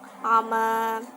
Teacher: Kemudian ada ama, bacaan mad iwat di mana fathah tanwin dibaca waqaf, dibaca fathah panjang